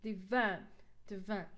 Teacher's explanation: here the schwa sound we cannot stress sound or the syllable the weak syllable so we put the stress on the second syllable